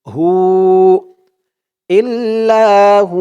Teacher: সাকিন হলে পেশের পরে ওয়াও সাকিন এক আলিফ টান দিতে হবে